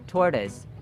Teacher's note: Tortoise, tortoise, not tortoise. So notice that the final sound is a schwa sound